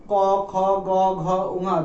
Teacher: এই কণ্ঠের স্থানে আমাদের জিহ্বার পশ্চাৎ ভাগ উচ্চারণ করে। ঠিক দেখো, তোমরা সকলে উচ্চারণ করে দেখো, ক, খ, গ, ঘ, ঙ যখনই উচ্চারণ করবো দেখবো প্রতিটা ক্ষেত্রে আমাদের জিহ্বাটা পিছিয়ে যায়। · ঠিক দেখো, তোমরা সকলে উচ্চারণ করে দেখো, ক, খ, গ, ঘ, ঙ যখনই উচ্চারণ করবো দেখবো প্রতিটা ক্ষেত্রে আমাদের জিহ্বাটা পিছিয়ে যায়। পিছিয়ে গিয়ে ঠিক আমাদের যদি এটা জিহ্বা হয়, এই জিহ্বার পশ্চাৎ অংশটা এটা গিয়ে আমাদের ঠিক এই কণ্ঠ এখানটায় স্পর্শ করে। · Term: কণ্ঠ ধ্বনি